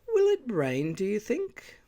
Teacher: note the super salience on will introducing a new topic